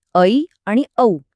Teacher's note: संयुक्त स्वर म्हणजे दोन स्वर एकत्र येऊन बनलेले ऐ आणि औ